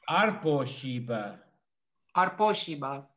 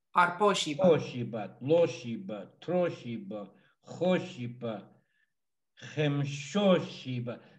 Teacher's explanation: The accent is on the O.